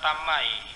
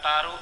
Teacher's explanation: Fonem konsonan T adalah fonem letus apiko-alveolar tidak bersuara. Fonem ini dalam distribusinya menduduki posisi awal dan tengah.